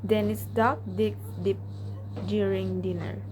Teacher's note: the d sound is a voiced alveolar plosive. It is made exactly like t, but while producing the d, the vocal cords vibrate.